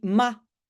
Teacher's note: on enlève pas seulement le r mais en plus c'est souvent une voyelle courte